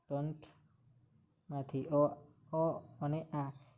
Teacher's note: કંઠમાંથી અ અને આ કંઠમાંથી બોલાતા સ્વરો છે